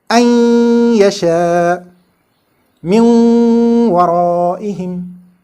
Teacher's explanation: If these letters are preceded by noon sakin, or if a noon sakin comes before them, that noon sakin gets inserted into these letters with gunnah or nasalization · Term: idgham ma'a gunnah